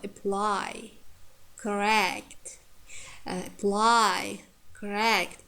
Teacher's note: You see, the first syllables are reduced. It has schwa sound.